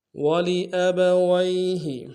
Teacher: یا لین ہے بغیر کھینچے پڑھیں گے